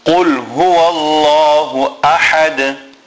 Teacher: in the word ahad, the ha is a big ha which must be pronounced from the center of the throat. And then we will have qalqala at the end because we have the ha joining to the dal.